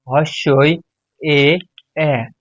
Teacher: জিভের অবস্থান অনুযায়ী সম্মুখস্বর ধ্বনি হস্যই এ এ